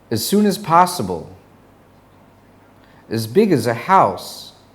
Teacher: As gets reduced to is, as in, he's just as good.